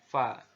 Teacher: diucapkan dengan menyentuhkan ujung dua gigi seri kita bagian atas dengan bibir bawah bagian dalam. Simpelnya seperti kita mengucapkan huruf F dalam alfabet gitu ya. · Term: huruf fa